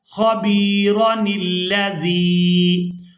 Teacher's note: تب بنے گا جب ہم نے یہاں پر وقف کرنا ہے، اگر ہم یہاں پر وقف نہیں کرتے تو پھر ہم نے را کو بغیر کھینچے ہی ادا کرنا ہے